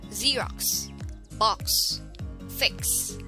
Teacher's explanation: appears in the middle or at the end of a word most commonly x is pronounced as a combination of the unvoiced sound k and s